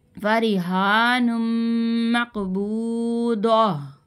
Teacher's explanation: گول تا کو ہاں میں بدل دیں گے